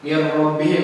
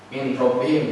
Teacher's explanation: Idgham ma'al guna itu mir rabbihim tuh. Min nun mati ketemu ro, kan bukan min rabbihim, jadi langsung ke mir rabbihim, langsung masuk mir ro.